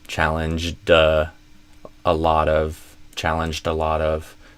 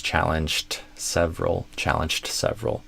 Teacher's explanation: if it's followed by a vowel, then you can imagine instead of a cht, you can imagine as a J D